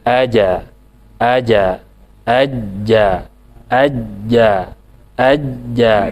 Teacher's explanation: ketika sukun ya ketika sukun atau ketika tasydid sekali lagi kesimpulannya huruf Jim itu ada di tengah lidah kemudian nempel ke atas kemudian lepas lepasnya itu natural alami